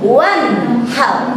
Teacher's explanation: Nun matinya itu jelas kita dengar di telinga. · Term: izhar